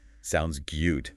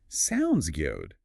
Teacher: And notice the intonation usually falls. · It signals you're decided. If you said, sounds good, with rising intonation, it might sound like you're not sure.